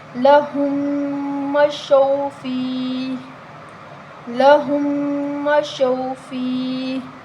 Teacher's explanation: واو لین ہے، بغیر کھینچے نرمی کے ساتھ پڑھیں گے۔